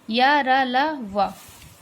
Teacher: इन व्यंजनों के उच्चारण में जिह्वा का पूरा स्पर्श मुख के किसी विशेष भाग के साथ नहीं होता है। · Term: अंतःस्थ व्यंजन